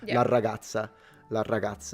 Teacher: Double R. So we have very strong rolled Rs.